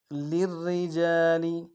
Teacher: لام کو آگے را کے ساتھ ملانا ہے، را کے نیچے زیر ہے باریک ادا کریں گے